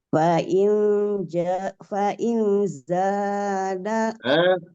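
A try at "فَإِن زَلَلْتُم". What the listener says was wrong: Kurang dengungnya. Ikhfa sama disertai dengan dengung. Ada dengungnya. Inza. Fa in zalaltum.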